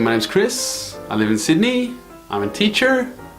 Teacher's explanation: they're giving a statement but they're actually rising on the end to say that they have more to say more to add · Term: up talk